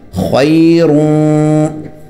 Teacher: زبان اوپر نہیں لگانی اخفا میں، ناک میں آواز چھپانی ہے خیرون، اور چونکہ سیکنڈ لاسٹ نمبر پر یا ہے تو اس پر مد بھی ہوگی وقفن خیر۔